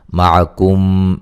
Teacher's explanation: معکم میم ساکن کا ادغام ہے